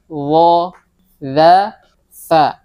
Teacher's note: 3 huruf yang keluar dari ujung lidah bertemu ujung gigi seri atas.